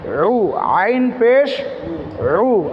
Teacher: পড়েছিলাম আইন হা এই দুটি হরফকে কণ্ঠনালীতে চাপ দিয়ে পড়তে হয় কণ্ঠনালীর মধ্যংশ থেকে উচ্চারণ করতে হয় অর্থাৎ কণ্ঠনালীটা চেপে যখন আপনি পড়বেন তখন এর সঠিক মাখরাজ টা আদায় হবে